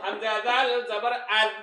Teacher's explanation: জাল হরফ জিহ্বার আগা থেকে নরম করে পড়তে হয়